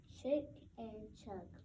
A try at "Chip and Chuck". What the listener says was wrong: Not chick. Chip.